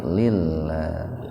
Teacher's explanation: Hubbal lillah tarki, asalnya li Allah gitu. Lafaz Allah didahului kasrah, jadi tarkik lillah